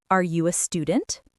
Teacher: For the music of questions, remember that yes, no questions usually have a rising intonation. Your voice goes up.